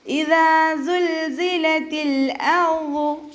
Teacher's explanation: ലാമിന് നമ്മൾ ഹാഫ് സുക്കൂന് കൊടുത്തിട്ട് ഹംസ ക്ലിയർ ആക്കി കൊടുക്കുക